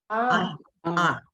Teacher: All you hear is the vowel because ayin is silent